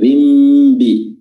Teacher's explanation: Idzin, ya, idzin yang tadinya dia tanwin atau kasratain dan terbaca nun, idzin, tapi bertemu dengan huruf ba pada lafaz bi jahannam, bi. Jadi nunnya dialihkan atau dibalik atau diganti menjadi huruf mim. Jadi kedengarannya zim, bukan lagi zin, tapi zimbi. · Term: iqlab